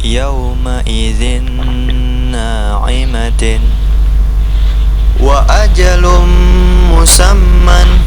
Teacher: idgam bighunah masuk dengan dengung. Apabila nuncukan atau tanwin bertemu antara dengan huruf antara salah satu huruf yang empat, mim, nun, wau, dan ya. · Nun sukun atau tanwin bertemu ya dibaca dengung. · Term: idgham bi gunnah